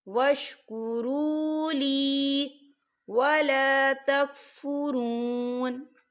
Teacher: یا ساکن ہے، یا ساکن سے پہلے زیر ہے، تو ہم اسے 2 حرکت کے برابر کھینچیں گے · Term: یا مدہ